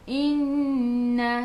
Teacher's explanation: Nun ada sabdu, tekan ke dalam nun dan dengung 2 harakat. Wajibul gunnah, wajib dengung.